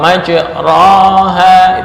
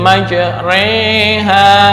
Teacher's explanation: Ketika membaca contoh majroha itu fathah, dibaca imalah kubro menjadi majreha